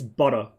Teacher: In Australian English, it's butter. It turns into a double D, which is, I think, an American trait.